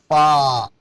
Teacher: اوپر والے دانت اور ہونٹوں کی تری، خشکی نہیں تری، فا اندر کے سائڈ میں۔